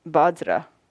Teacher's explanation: we don't have a v sound in the tibetan alphabet so it's become badra